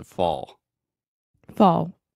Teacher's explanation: So, you have the final L, but the A combined with the dark L sound almost makes the same sound as the aw. · it's not totally like fa, but you have fall and then that dark L sound